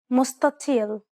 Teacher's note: The emphatic spreading of the dark letter causes the letters adjacent to it to sound deeper than normal. This is why the first consonant is pronounced dark instead of what is written.